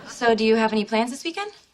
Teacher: rising intonation to show it's a question